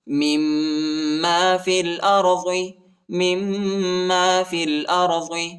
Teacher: فا کو لام کے ساتھ ملائیں گے، یا اور الف نہیں پڑھا جاتا، یا اور الف پر حرکت نہیں۔